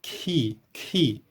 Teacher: a junção do som K mais a aspiração H